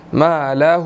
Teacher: ہا الٹا پیش ہو، ہم اس کو ادا کریں گے، 1 سیکنڈ لمبا کریں گے